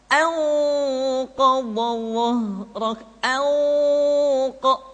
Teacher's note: Ketika nun mati tanwin bertemu dengan 5 huruf tadi, maka harus terdengar suara gunnah yang menebal atau disebut dengan tafkhimul gunnah